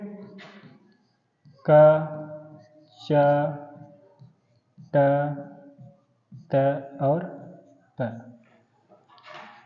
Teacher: जो उच्चारण स्थान है वो कैसे कैसे होते हैं। तो कंठ, तालु, मूर्धन्य, दंत और ओष्ठ।